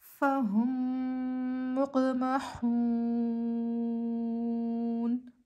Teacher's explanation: مد عارض للسکون بنے گی، 6 حرکات کے برابر کھینچ کے پڑھیں گے · نون کے اوپر زبر ہے، زبر کو ہم بغیر کھینچے بغیر جھٹکا دیے پڑھیں گے، جیسے نون زبر نا، پیچھے سے ملا کر پڑھیں فہم مقمحون۔ حالت وقف میں نون کی زبر حذف ہو جائے گی